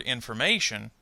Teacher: the stress is the syllable before the suffix shun